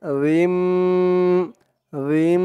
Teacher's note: না ধরে এই যে ছোট একটা মিম আছে এই মিমকে ধরবে এখানে গুন্নাহ করতে হবে ইকলাব গুন্নাহ